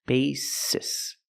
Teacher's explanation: we have the long a b basis in the word basis both s's are pronounced like true s's there's no z sound